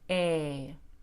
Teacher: when I say a the tip of my tongue is touching the hard gum tissue right underneath my bottom teeth also the tongue is tense and the cheeks are tense the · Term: long a